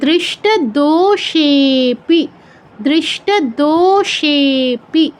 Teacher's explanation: দো আর সে দীর্ঘ, কিন্তু পরে অবগ্রহ থাকায় সেটা হচ্ছে প্লুত হয়ে গেছে